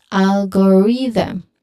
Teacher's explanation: Remember, the th sound should be voiced